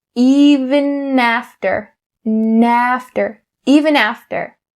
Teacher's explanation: the connecting between even and after. You bring that n over to after.